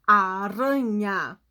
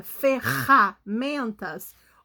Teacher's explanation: Quando nós pronunciamos aranha, o rá do aranha, do rã, tá na ponta da língua. Aranha. Agora, quando a gente pronuncia ferramentas, o rá parece que tá lá na garganta